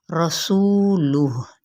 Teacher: وفیکم واو ہونٹوں کی نا تمام گلائی کے ساتھ فی پہ مد اصلی بالیا اور کم پہ اظہار شفوی، رسولہ، ٹھیک ہے، رو پر پڑھا جائے گا، سو پہ مد اصلی بالواو کا قاعدہ ہو رہا ہے، اور سین کی سیٹی کو آپ نے واضح طور پر پڑھنا ہے۔ رسولہ ہا پہ ہم نے وقف کر دینا ہے، اور لام کی پیش کو ہم نے لوہ کر کے نہیں پڑھنا، رسولہ، ٹھیک ہے، رسولہ، ٹھیک ہے، ہا کی آواز نکلے گی۔